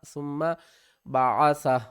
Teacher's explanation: سا کو میم سے ملائیں گے، میم مشددہ گنہ کریں گے، ثم میم زبر ما، ثم بعثہ.